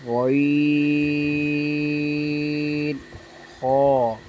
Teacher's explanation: Number 3 پر مخرج ہے غین خا۔ غین خا جو ہے حلق کے اوپر والے حصے سے ادا ہوتے ہیں